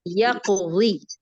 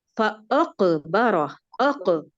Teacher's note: قلقلہ کا درجہ بہت کم تھا، اس کو مکمل درجہ سے ادا کرتے ہیں